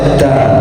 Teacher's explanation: tak ini kan termasuk hamas, jadi harus ta. Jadi ada disertai nafasnya